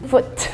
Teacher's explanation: in British they pronounce the T's much more strongly than American